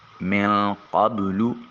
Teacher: قاف کو موٹا اور پر کر کے ادا کریں گے۔ زبان کی جڑ جب اوپر والے تالو کے ساتھ ملے تو قاف ادا ہوگا۔